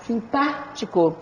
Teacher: Eu falo simpático, sílaba tônica é o pá, simpático. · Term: proparoxítona